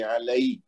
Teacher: یا کے اوپر جزم ہے لیکن اس سے پہلے زبر ہے، تو یہ یا لین ہے، یہ یا مد نہیں ہے، اس کو لمبا نہیں کریں گے